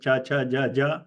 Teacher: the contact between tongue and the pallate is a real hard contact